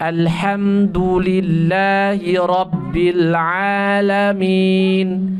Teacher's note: Jadi yang tebal rnya saja yang lainnya tipis jadi enggak yang lainnya enggak boleh tebal alhamdulillahiabbil alam sekarang ini